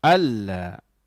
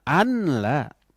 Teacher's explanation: idgham itu artinya memasukkan bunyi huruf nun yang mati ke dalam huruf lam. Nunnya hilang. Alla. Jangan anla. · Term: Idgham tanpa dengung